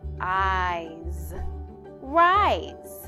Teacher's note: with an S that sounds like a Z because it's near the end of the word